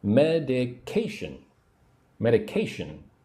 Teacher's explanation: Put the emphasis on the third syllable. 1 2 3. Medication.